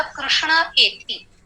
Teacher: विसर्ग का लोप हुआ, हटा दिया